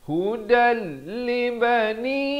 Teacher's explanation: Hudal, di sini idgham bila gunnah, daripada hudan. Asalnya dal tanwin dua di atas bunyi dan, tapi datang lam jadi masuk tanpa dengung. Hudal libani, 4 atau 5 harakat.